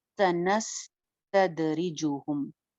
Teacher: स सीटी के साथ है, नस चलती हुई आवाज, तद दाल की आवाज बाउंसी साउंड होगी, कलकला हो जाएगा